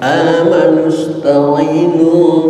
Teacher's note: kena Hamzahnya Hamzah wasal ketika disambungkan menjadi hilang